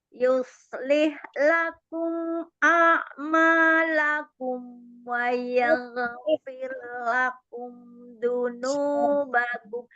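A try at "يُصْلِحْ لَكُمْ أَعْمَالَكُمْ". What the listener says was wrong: Sukun ya. Tadi itu ulangi di awalan itu ada shad sukun. Ada shad sukun.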